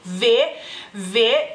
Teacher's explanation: es labio dental, ya que el labio inferior toca los dientes superiores a la hora de pronunciar esta letra